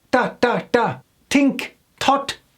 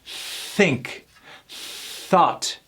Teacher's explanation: With the soft TH, we have a tendency of doing the T sound.